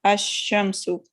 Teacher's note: When al is prefixed to a noun beginning with the solar letter, the L of al is assimilated to the solar letter.